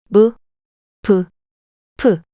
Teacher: lip sounds made by lightly touching the upper and lower lips together